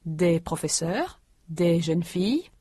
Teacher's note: the s in des and les is not heard before a consonant